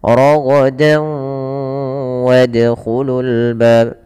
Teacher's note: masukkan tanwinnya ke waw dan ditahan dan dibunyikan dengan huruf waw. Suara nunnya hilang. Rogodan menjadi rogodaw. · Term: idgham bi gunnah